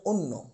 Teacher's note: শব্দের শুরুতে অ রয়েছে এবং তারপর ব্যঞ্জনের সাথে যদি জ ফলা যুক্ত থাকে তাহলে অ এর উচ্চারণ ও হয়ে যায় অর্থাৎ সংবৃত্ত উচ্চারণ হয়